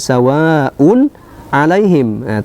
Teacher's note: dibaca jelas tidak boleh didengungkan tidak boleh dipanjangkan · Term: izhar halqi